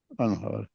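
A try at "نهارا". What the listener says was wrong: No, it's not anhar. Nahara yanharu. Nahara yanharu. So yanharu.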